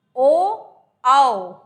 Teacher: ओ आओ बोलने में मुंह हमारा ऊ आओ से बड़ा खुलता है और सीधी गले में से हवा बाहर को आती है